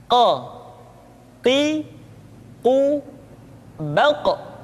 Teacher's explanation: pangkal lidah kita dengan langit-langit bagian belakang Q Qi qu baq diucapkan dengan suara yang tebal dan dalam posisi sukun maka terdengar pantulan suara · huruf q diucapkan dengan cara menyentuhkan pangkal lidah kita dengan langit-langit bagian belakang Q Qi qu baq diucapkan dengan suara yang tebal dan dalam